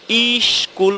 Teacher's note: যখনই ইস কুল উচ্চারণ করেছি তখনই কিন্তু প্রথমে একটা ই ধ্বনি চলে এসেছে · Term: আদি স্বরাগম